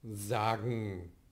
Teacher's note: Zum Beispiel bei der Endungsreduktion sagen. Ja, das G ist hier entscheidend dafür, dass die Endung en auf den velaren Nasal reduziert wird. Und das ist eine progressive Assimilation.